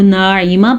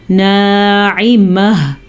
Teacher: नाइमह, अगर आप इसको नाइमा पढ़ते हैं तो आप गलत पढ़ते हैं, इसको नाइमह, हा की आवाज़ एंड में ज़रूर आनी चाहिए